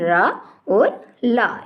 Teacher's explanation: इन दोनों के उच्चारण में जीभ दंत मूल को स्पर्श करती है।